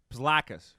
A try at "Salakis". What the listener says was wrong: The P is silent.